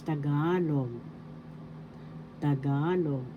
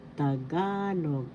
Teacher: The second syllable has the accent.